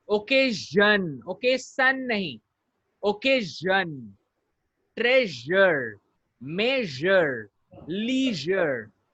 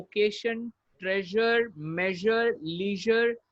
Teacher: जब भी आप बोलोगे तो वहां पे जो एस आई या एस यू का जो प्रोनाउंसिएशन होगा वो ज होगा, जेड एच, जेड एच। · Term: ZH